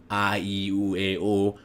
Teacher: I'm actually retracting and elevating this velum, this soft palate, to block off the nasal passage. So we use it all the time because when we speak English, almost all of our vowels, like we said, are oral vowels.